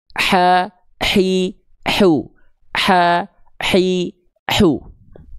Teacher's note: Jadi dia karakter nafasnya berbisik, lembut. Ha hi hu. Rasakan katup epiglotisnya atau tengah tenggorokannya.